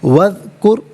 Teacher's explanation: اذکر، واو پر زبر ہے، اسے اذکر کی ذال ساکن کے ساتھ ملائیں گے، درمیان میں سے الف یعنی حمزہ کو حذف کیا جائے گا، اسے وذکر پڑھیں گے، را ساکن ماقبل کاف پر پیش را ساکن کو پر کر کے پڑھا جائے گا